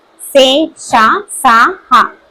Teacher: గాలిని బయటికి ఊదుతూ పలికే అక్షరాలని ఊష్మాలు అంటారు